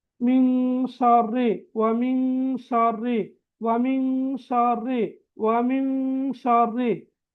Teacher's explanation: சுக்கூன் செய்யப்பட்ட நூனுக்கு பிறகு சீன் வந்திருக்குது. எனவே நாங்க சுக்கூனை மறைத்து ராகம் எடுத்து குன்னா செஞ்சு ஓதணும். அப்படி குன்னா செஞ்சு ஓதக்கொள்ள இன்னொரு சீரான அழகான ஓசையம் கொண்டு வரும். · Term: இஹ்ஃபாவுடைய சட்டம்